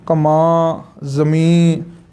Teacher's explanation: ਲਮਕਾ ਕੇ ਪੜ੍ਹਾਉਣੇ ਆ ਵੀ ਉਹ ਬਿੰਦੀ 'ਚੋਂ ਅੱਧਾ ਨੰਨਾ ਬੁਲਾਉਣਾ ਹੁੰਦਾ ਹੈ।